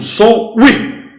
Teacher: O som do i é muito mais forte, quer dizer, primeiro vem a semivogal, depois vem a vogal. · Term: ditongo crescente